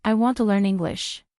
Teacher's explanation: Notice how want, learn, and English are stronger. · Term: strong word stress